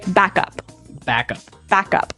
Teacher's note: So both words are stressed at about the same level